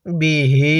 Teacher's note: আমরা ওই হায়ে জমিরের মধ্যে তিন আলিফ টেনে পড়বো